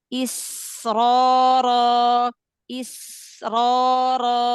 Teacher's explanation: Masih alirkan aja. Ketemu dengan ro, dia nafasnya masih mengalir, suaranya masih mengalir.